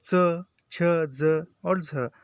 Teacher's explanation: झ जो है वह स्पर्श संघर्षी व्यंजन है अधिकता होती है उच्चारण के बाद वाला भाग संघर्षी हो जाता है